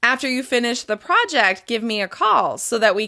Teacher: include a slight rise in pitch after each thought group and then fall at the end